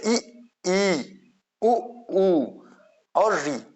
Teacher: समृत स्वर का मतलब होता है अर्थ बंद होना यानी इन इनके उच्चारण करते समय मुख प्रायः बंद सा रहता है